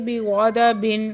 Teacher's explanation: تنوین کے بعد حروف ہلکی میں سے عین ہے، اظہار ہلکی کا قاعدہ ہو رہا ہے